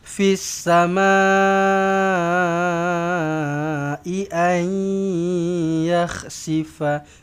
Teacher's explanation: nun kosong bertemu dengan ya, senyum, dengung 2 harakat di sini, idgham ma'al ghunnah. Ay, jangan tak boleh macam tu, nanti dia jadi ikhfa.